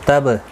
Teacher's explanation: با ساکن پر قلقلہ ہوگا